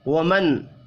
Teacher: نون ساکن کے بعد حمزہ ہے، اظہار حلقی ہوگا، غنہ نہیں ہوگا